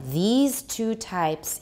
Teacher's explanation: because s is pronounced as z and that makes the e even longer